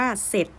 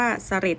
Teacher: เขาจะไม่พูดตัวรอเรือลอลิงในคำนั้นนะคะอย่างเช่นคำนี้บ่aDoorเบ็ดสจเอจอเสร็จแต่เวลาเราออกเสียงออกเสียงว่าเสร็จแล้วไม่ออกเสียงว่าเสลดอย่างนี้นะคะคือ เวลาเราออกเสียงว่าตัดรอเรือทิ้งไปเลย